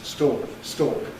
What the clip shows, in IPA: stɔːk